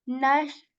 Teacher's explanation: when we articulate sheen, the air spreads in our mouth. Okay, the air spreads in our mouth and the sound goes like nash.